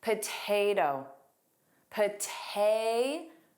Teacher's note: I'm only turning the last T into the flap T.